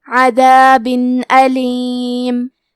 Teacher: اظہار کا معنی ہے ظاہر کرنا، اور کیونکہ تنوین کی اصلیت نون ساکن ہے تو ہم یہاں تنوین ظاہر کریں گے اور اسے نون ساکن پڑھیں گے اور بغیر غنہ سے یہ حکم کو ادا کریں گے